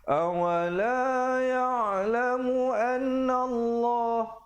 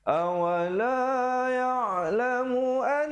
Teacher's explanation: Jadi kemudian an didengungkan 2 harakat. Di situ hukumnya wajibul gunnah, wajib dengung 2 harakat.